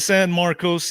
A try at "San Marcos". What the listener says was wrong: It's not pronounced San Marcos. It's Sam Marcus. that is how they pronounce it. It's Sam Marcus. they pronounce everything a little different there.